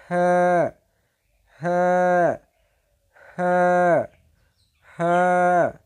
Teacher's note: কণ্ঠনালীর শুরু হইতে উচ্চারিত হয়